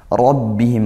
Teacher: Kemudian pakai ain ya arbihim nun sukun bertemu ro idgham bila ghunah masuk tanpa disertai dengung rbihim rnya tafkhimkan karena tebalkan karena dia fathah